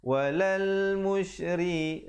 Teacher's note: ri di situ menjadi nipis